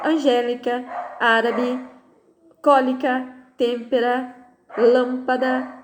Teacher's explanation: existe a antepenúltima sílaba mais forte